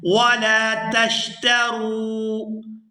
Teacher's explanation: وَلَا تَشْتَرُوا، وَلَا، یہاں بھی لام کو الف مدہ کی وجہ سے کھینچ کر ادا کیا جائے گا، اور آگے تا کو شین کے ساتھ ملائیں گے، اور شین کی جو آواز ہے یہ سیٹی کی مثل ادا ہوتی ہے · یہاں را کو واو ساکن کے ساتھ ملائیں گے تو کھینچ کر ادا کریں گے